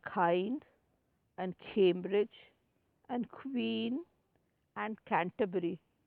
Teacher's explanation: the back of the tongue is against the soft pallet